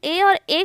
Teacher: जैसे कंठ और तालु, अगर हम ए और ए का उच्चारण करते हैं तो हमारे कंठ के साथ साथ तालु को भी, कंठ से तो आवाज़ निकलता है और जीभ तालु को भी टच करता है, इसलिए इसे कंठ तालव्य व्यंजन कहते हैं